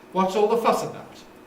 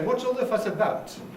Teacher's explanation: Nucleus on fuss, because about is a preposition.